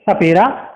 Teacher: सा जो है दांतों में दबेगा, जीभ जो है हमारी दांतों के बीच आएगी